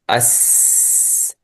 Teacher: طيب مخرج السين، عفوا الزاي والسين والصاد من طرف اللسان من فويق الثنايا السفلى